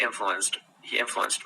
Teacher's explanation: we use a T kind of sound at the end instead of a D.